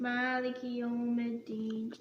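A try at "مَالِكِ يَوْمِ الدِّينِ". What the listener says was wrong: Take the American accent out. No, say Maliki. Take the ma, meme fatha ma. And what's after the meme? A little alif. Pay very close attention to those. And then the kaf. Lam kaf. Maliki Yawmiddin.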